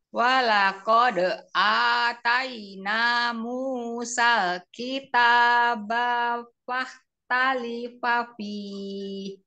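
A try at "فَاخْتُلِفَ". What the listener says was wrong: bafah tulifa, bukan talifa, tulifa. bukan fahtu, bukan fahta.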